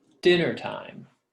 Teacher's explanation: stressed at the beginning and two unstressed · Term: dactyl